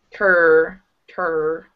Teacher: You really have to pronounce the R. Tur tur that's that R sound in English especially American English that's very very strong this sound